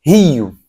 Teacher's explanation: Rio está no I, subiu para o O, subiu o patamar de tom crescente. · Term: ditongo crescente